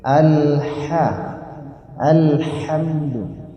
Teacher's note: H tipis keluar napas